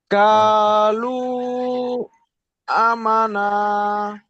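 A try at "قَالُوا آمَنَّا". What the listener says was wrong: না, আমি বলেছি না ভাই, একটা জিনিস দেখেন, এখানে উচ্চারণ ভুল আছে ঠিক আছে, তারপরে আমি একটা কথা বলি, আপনি ঠিক পড়ার চেষ্টা করেছেন। আ, এখানে একটা পরিমাণ টান হবে, লুতে তিন আলিফ পরিমাণ টান হবে, এবং আমান, নুন সাকিনের মাথায় যখন তাসদিদ হবে, তখন সেটাকে গুণনা করে পড়তে হবে। قالوا آمنا করেন।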